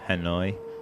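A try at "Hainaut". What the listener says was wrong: In French it just sounds like Inu. You don't pronounce the H at the beginning and not you don't pronounce the T at the end.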